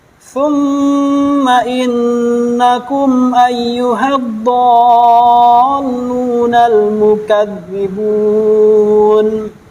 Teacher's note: Jadi mim sukun bertemu dengan alif. Jadi kita bacanya tidak boleh didengungkan. Bacanya tetap ditawasudkan.